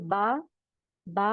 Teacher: दोनों होठ दोनों होठ ऊपर के और नीचे के